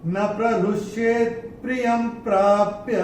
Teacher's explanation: ये पहले चरण में अगर आप देखेंगे, य के ऊपर ये जो अनुस्वार आ रहा है उसके बाद का अक्षर है प, और अनुस्वार के बाद जब प आएगा तो अनुस्वार का उच्चारण होगा म।